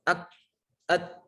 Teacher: Kaf dan Ta tadi kan sifatnya syiddah ketika dia sukun maka harus harus kuat